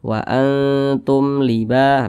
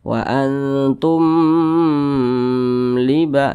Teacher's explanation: maka ini dibaca jelas tidak berdengung J pendek saja Bacanya jangan jangan didengungkan jadi dibaca Wa Antum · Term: izhar syafawi